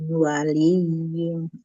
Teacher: Ketika baca mim, ya mi langsung ke waw.